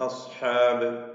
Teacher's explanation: ഇസ്തിഅലാഇന്റെ അക്ഷരങ്ങളിൽ പെട്ടതാണ് സ്വാദ്. നാം ഉയർത്തി ഉച്ചരിക്കപ്പെടുന്ന അക്ഷരമാണ് സ്വാദ് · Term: തഫ്ഹീമുണ്ട്